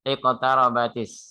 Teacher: Karena dia ada huruf samsiah, maka dia lamnya tidak terbaca. · Karena dia berharokat fathah. Ro yang berharokat fathah dibaca tebel. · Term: alif lam samsiah, tafhim